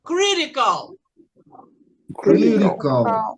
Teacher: T, entre duas vogais, ele tem som de R.